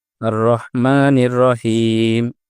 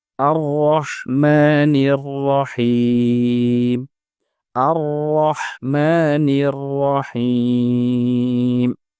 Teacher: এই আয়াতেও র হরফের উপরে জবর থাকায় র হরফটি পুর বা মোটা হয়ে উচ্চারিত হবে এবং হা যেহেতু বড় হা, এজন্য এটি উচ্চারণ করার সময় মুখ থেকে বাতাস বের হবে।